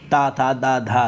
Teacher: धा सघोष महाप्राण दंत है। ता था दा धा, देखो दंत भी है, महाप्राण ता था दा धा महाप्राण भी है, सघोष भी है, बिल्कुल राइट है।